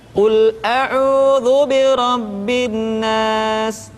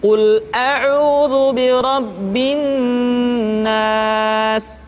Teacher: ditahan suaranya ketika mengucapkan nun tasydid